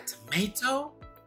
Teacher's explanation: Dua kata bahasa Inggris ini penekanannya di silabel atau sukata yang kedua.